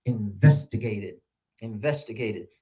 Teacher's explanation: And so it's 5 syllables. And on which one is the primary stress? It's on the second one.